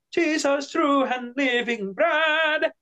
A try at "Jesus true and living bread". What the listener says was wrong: Livingnya ada sedikit melambat.